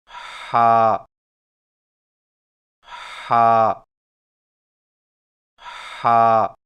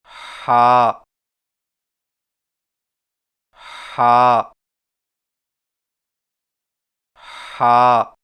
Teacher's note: زبان کی جڑ کو حلق کی طرف مضبوطی سے دباتے ہوئے باریک اور رگڑ کھاتی سانس میں پڑھیں